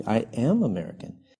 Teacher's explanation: nós colocamos a ênfase no verbo auxiliar. · Daí eu coloco mais ênfase e eu não uso a contração para poder colocar a ênfase no verbo to be.